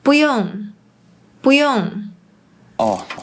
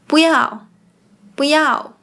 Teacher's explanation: for the word “一 one” and “不 not”, they’re often pronounced with the fourth tone in Malaysian Mandarin